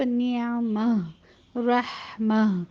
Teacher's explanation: اس حرف پر وقف کی صورت میں ہم تا کو ہاں میں بدل دیتے ہیں، اور وصل کی صورت میں ہمیشہ تا کے ساتھ پڑھا جاتا ہے، اور اس پر جو بھی حرکت ہوتی ہے اسے اگلے حرف سے ملا کر پڑھا جاتا ہے. · پھر اس کی جو استثنائی کیفیت ہے وہ کیا ہے کہ جب تا مربوطہ آ جاتا، نعمتن یا رحمتن، تو اس پر اگر آپ ٹھہریں تو اس کی صورت میں جو تا مربوطہ ہے وہ ہا میں تبدیل ہو جاتا ہے، اور ہا کو جب آپ ساکن کریں گے تو اس کو پھر آپ نعمہ رحمہ، اس پر یہاں حرف مد العوض نہیں ہوگا.